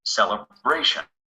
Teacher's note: we stress the syllable just before the shun